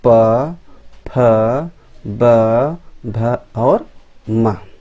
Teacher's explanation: इनका उच्चारण जो है स्थान ओष्ठ होता है